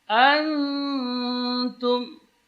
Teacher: nun yang sukun baru ketemu dengan ta. Di sini ikhfa. Karena ta huruf tarqiq, maka ikhfa-nya di sini dibaca tipis.